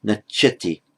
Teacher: the tya followed by a vowel becoming a double ch